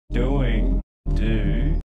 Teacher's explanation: the glides in GOOSE and GOAT usually become non-back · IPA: ɵɥ, əɥ